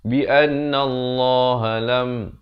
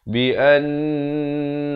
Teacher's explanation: Mestilah bi annallah baru masuk nallah. An itu didengungkan 2 harakat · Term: wajib dengung